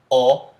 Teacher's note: the closed back rounded o